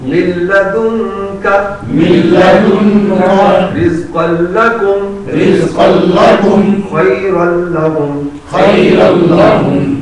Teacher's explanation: लाम पढ़ा जाएगा, नून नहीं पढ़ा जाएगा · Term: इदगाम